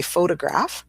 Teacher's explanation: So we say photograph. So we've got the schwa right in the middle there with that middle O